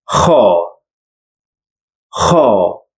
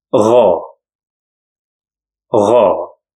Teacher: The last couple in throat sounds are kha and gha, and they are coming out from the lower throat. Gha is like the sound you make whenever you put some water around your throat and start moving them around, while kha is the snoring sound.